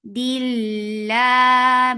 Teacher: The lafz jalala will be light because there is kasra before it. Dilla by default it is long.